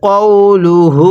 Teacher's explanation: এটাকে কাউলুহু পড়া যাবে না, কফ ওয়াও জবর কাউ পড়া যাবে না। তাহলে কওলুহু।